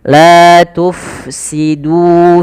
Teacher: Alirkan nafas dalam melafalkan fa, f gitu ya.